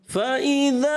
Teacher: مد اصلی، حرف مدہ، ایک الف کھینچنا ہے، آپ نے اس کو بڑھانا نہیں ہے